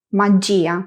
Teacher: Como la sílaba fuerte cae en la i del grupo ya, no pronunciamos ya en un único sonido, sino gia. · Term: sílaba tónica